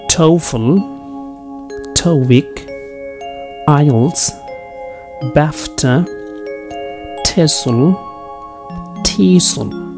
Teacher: Acronym always takes primary stress on the first syllable.